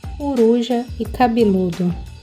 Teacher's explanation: a presença do I e do U na sílaba tônica faz com que as vogais átonas pretônicas escritas com E e com O se reduzam e sejam pronunciadas I e U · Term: harmonização vocálica